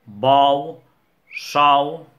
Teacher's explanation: També apareix la O oberta quan forma part del diftong OU